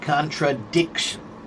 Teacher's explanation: contradiction is four syllables, but the accent is right before the shun